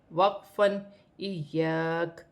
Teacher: وقف کی صورت میں زبر گر جائے گی اور کاف ساکن ہو جائے گی۔